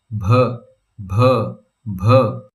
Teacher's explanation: Here's bh. Say bh, a bee with a puff of air.